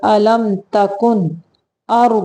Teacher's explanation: نون ساکن کے بعد حمزہ آ گیا ہے، یہاں پہ اظہار کا قاعدہ ہے، صرف نون کو ظاہر کریں گے